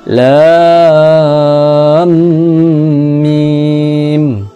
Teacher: terjadi idgham bi gunnah karena mim mati berjumpa dengan mim, yaitu ketika ejaan huruf lam berjumpa dengan huruf mim.